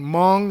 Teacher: the final N on Mong, you don't pronounce it. It's nasal. It's just like through your, you know, forcing the air through your nose.